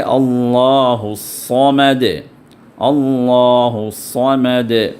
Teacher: الصمد اللہ الصمد، الصمد، صاد کو یہاں پر شدہ ہے، تو صاد کو دبا کر نکالیے اور تھوڑا پر کر کے نکالیے ، اللہ الصمد نہیں، سین نہیں ہے، یہ صاد ہے، سین